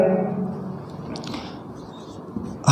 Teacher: हा जो व्यंजन है ये काकल्ली है, यानी गले में काकल्ली से इसका उच्चारण होता है, स्वर यंत्री से होता है। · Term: काकल्य